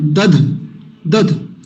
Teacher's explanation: पहला अल्प प्राण दूसरा महाप्राण पहला डी दूसरा डी एच है ना डी एंड डी एच